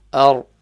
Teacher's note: So the ra here is going to be full mouth because it has a fatha before the ra. So you read the ra full mouth.